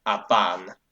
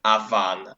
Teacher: it's a case of stops becoming fricatives